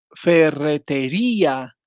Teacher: se trata de un hiato con acento en la vocal cerrada